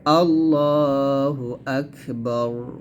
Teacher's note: হা পেশ টান দেওয়া যাবে না আল্লাহু আকবারু থামলে হবে আকবার এখানে বাতে টান দেওয়া যাবে না বার বাগে রকে ধরবে